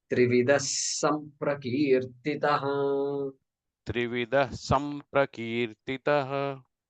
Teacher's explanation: So that visarga has to be pronounced with a sakara.